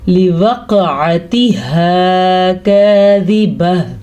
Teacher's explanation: ہا کے مخرج کو گلے کے آخری حصے سے نکالنا ہے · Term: حروف حلقی